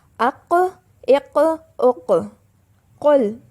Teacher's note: صاد، طا، قاف، ان حروف کی آواز ت، سین اور کاف کے مقابلے میں بھاری ہوتی ہے، یعنی ت سے بھاری آواز طا کی ہے، سین سے بھاری آواز صاد کی ہے، کاف سے بھاری آواز قاف کی ہے